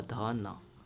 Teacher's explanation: आपकी जीभ जो है ना दांत को छू रही होगी